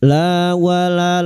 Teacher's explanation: La wala lam alif 2 harakat kita panjangkan mad tabi'i